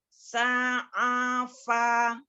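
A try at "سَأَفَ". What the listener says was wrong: Jangan ditekan nih. Sa'afa.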